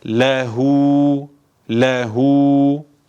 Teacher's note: Bir önceki harfi hareketli olduğundan dolayı bu zamir uzatılır bu h harfi uzatılır ne kadar bir elif miktarı